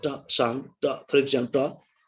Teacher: Touches hair, the alveolar region. Okay, the tip of the tongue touches here the alveolar region or teeth region, and the sound ta is produced. Ta, that is, that upper part doesn't come to touch the lower part.